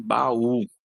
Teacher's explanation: Temos duas vogais com som forte, a e u, e elas formam duas sílabas.